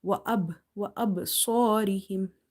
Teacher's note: because ba is between somewhere in the word, the qalqala, the echoing, will be weak. You can't feel it.